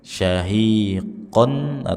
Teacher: Syahiqon tanwin kita baca dengan ghunah, dengung. Kemudian dibaca dengan memonyongkan bibir dan suaranya berasal dari rongga hidung bukan rongga mulut.